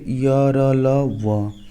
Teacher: जिन व्यंजनों के उच्चारण में जीवा मुख के किसी भाग को नहीं छूती और हवा बिना रगड़ खाए मुंह से बाहर निकल जाती है, उन्हें अंतस्थ व्यंजन कहते हैं।